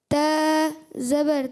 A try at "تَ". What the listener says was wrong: اچھا منہ کھول کے تا نہیں. تا زبر تا. تا کی حرکت یعنی زبر کی حرکت جو ہے نا آپ کی تھوڑی سی لمبی نہیں کرنی آپ نے.